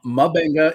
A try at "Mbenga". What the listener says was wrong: is Mbenga. It's just the letter M, yeah. Mbenga.